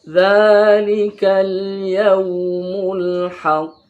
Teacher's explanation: Jadi pantulannya ini besar, paling besar di antara qalqalah yang lain. Ini paling besar. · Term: qalqalah kubra